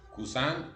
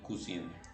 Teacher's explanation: cousin nasaliza la I y cousine no la nasaliza, porque después de esa N hay una E.